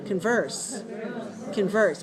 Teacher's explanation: put the stress on the second syllable